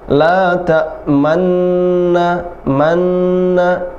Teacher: Tetap dibaca man, mau ke nu tapi nggak jadi, hanya mulutnya saja dimonyongkan, harokatnya tetap ma. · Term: ismam